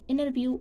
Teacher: Sometimes the letter ta is dropped after n. Whenever the ta sound is come after the n sound, so the American tend to drop the ta sound.